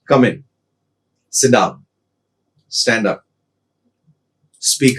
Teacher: Falling tone is used in the case of commands such as come in, sit down, stand up